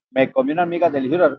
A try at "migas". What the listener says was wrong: Pronuncio, pronuncie bien, porque migas, diga migas, porque se entendió amigas.